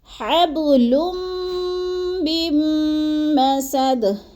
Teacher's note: ادھر ادغام مع الغنہ نہیں ہے، کیا ہے، ادھر ادغام بلا غنہ ہے، بغیر غنہ کے ہم نے ادغام کرنا ہے. تو کیسے کرنا ہے، میم مشدد کو پچھلی میم مشدد کے ساتھ ملانا ہے، درمیان والا نون ساکن نہیں پڑھا جائے گا.